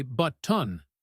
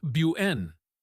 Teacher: Another very common form of elision is the glottle stop. This is when we replace a t sound with a little stop of air like a tiny cough.